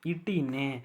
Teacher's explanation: நாவின் நுனி அன்னத்தின் நுனியை பொருந்துவதால் பிறக்குது